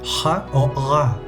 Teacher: utilizan la pared trasera de la boca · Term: faríngeas